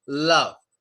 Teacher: tip of our tongue touches the top of our mouth. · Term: L sound